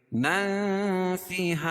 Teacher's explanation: نن فیہا، اخفاء حقیقی، کیونکہ تنوین کے بعد حروف اخفاء کے 15 حرفوں میں سے فا ہے، یا ناک میں آواز کو چھپا کر پڑھیں گے